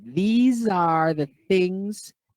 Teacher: the voice is continuous the same for the s the same for the th